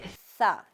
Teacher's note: सा जुबान की नोक कहाँ लगेगी? ऊपर वाले दोनों दांतों के सिरे से सा